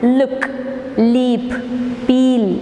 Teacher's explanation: air is blocked at the center and escapes through the sides by producing the sound L